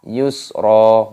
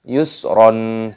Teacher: Roknya dibaca yusra. Mad iwad. Jangan dibaca yusron. Tidak boleh seperti itu.